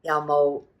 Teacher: The low rising 有 冇, which is your have or not have